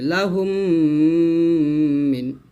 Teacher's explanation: মিম সেকেন্ডের পর মিম আছে গুণ হবে